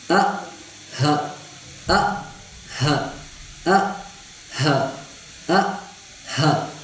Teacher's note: हमजा और हा का मखरज है हलब का वो हिस्सा जो सीने की तरफ है